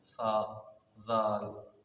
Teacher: दाल जहाँ से सा अदा होता है, जुबान का सिरा ऊपर के दांतों के अंदरूनी किनारे से लगेगा।